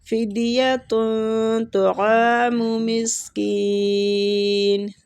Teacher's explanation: طا کو پور پڑھیں گے، عین کو کھینچیں گے